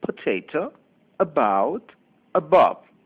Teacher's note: This is the schwa sound, also known as the lazy sound. Open your mouth and make a sound a, as in potato, about, above. It is a short sound. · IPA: /ə/